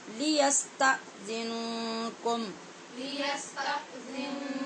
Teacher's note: یستا پہ پورے جھٹکے سے آواز کو بند کرنا ضروری ہے